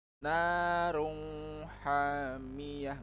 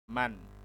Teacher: Maka hukum bacanya adalah izhar, artinya dibaca jelas nun sukun atau tanwinnya.